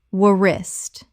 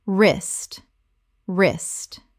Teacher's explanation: The W is completely silent. One syllable only.